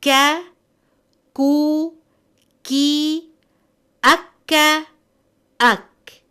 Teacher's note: The letter kaf is pronounced when the root of the tongue touches the hard part of the palate, more closer to the mouth.